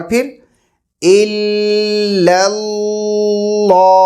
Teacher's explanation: اور پورے لام کو موٹا کر دینا، الا اللہ، یہ بھی غلط ہے. پہلے کے دو لام باریک، آخری کے دو لام موٹے. اور آخر میں ہے لفظ ہا ہے، تو جس کی وجہ سے ہم ہا کے اوپر اینڈ کریں گے، لیکن ہا کی آواز کے ساتھ، اللہ، الا اللہ، ایسے اس طریقے سے.